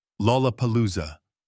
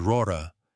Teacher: It contains 4 L sounds, each one at the beginning of a syllable, requiring a fresh, deliberate articulation.